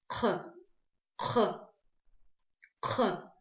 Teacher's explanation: Значит, смотрите, чтобы правильно произнести букву Х, нам нужно, произношение происходит за счет размыкания задней части языка и гортани при выдыхании воздуха. Вот эта часть работает.